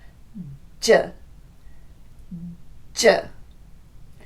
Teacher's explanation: This firm contact is necessary because j is a burst sound, which means air pressure has to be built up behind the tongue so it can be released in a quick burst.